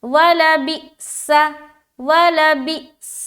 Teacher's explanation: सीन को सीटी की तरह अदा करना है